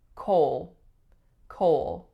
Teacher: but a few tricky things going on the first is that we have the vowel o and it goes right into a dark L sound